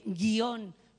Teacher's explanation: esta palabra no puede pronunciarse de otra manera que haciendo la O tónica, haciendo que el acento recaiga sobre la O. Da igual que uno pronuncie guión con un hiato o que pronuncie guión con un diptongo.